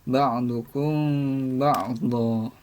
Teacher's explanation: cara membacanya mim mati dibaca dengan samar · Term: ikhfa syafawi